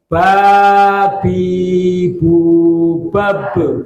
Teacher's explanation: karena huruf ba itu huruf qalqalah maka yang terakhir mati harus dipantulkan